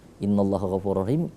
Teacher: innanya dibaca dengung, Allahnya dibaca tebal, ghafurur rahim, rurnya kita leburkan karena dia idgham bila guna, rahimnya matahari disukun ya.